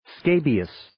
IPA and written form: 'skeɪbiːəs (Scabious)